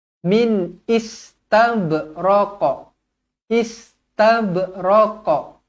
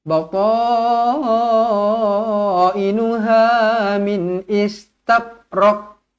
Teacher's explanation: Ba dibaca qalqalah sughra melantun, jangan istabraq.